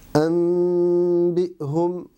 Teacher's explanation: À ce moment-là, je vais juste superposer mes lèvres et laisser al-ghunna sortir par le nez pendant un certain temps et ouvrir mes lèvres pour prononcer al-ba. Anbihum. Remarquez que je n'exerce pas de pression sur mes lèvres pour préserver al-ikhfa. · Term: un mim dissimulé